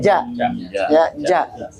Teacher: makhrajnya ada di tengah lisan bagian tengah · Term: jim